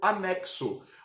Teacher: anexo, onde o X tem um som de KS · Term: dífonos